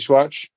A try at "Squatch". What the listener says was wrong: You called him Swatch. No, you said Swatch like a piece of fabric. 80s watch.